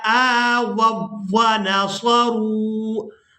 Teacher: अब यहाँ पर हमने वाव को वाव मुशद्दद के साथ मिलाना है। यहाँ पर जो आप लोग वाव साकिन देख रहे हैं इसको हम छोड़ देंगे